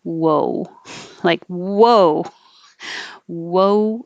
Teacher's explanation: Woe is kind of lips go small, big, small, like a fish.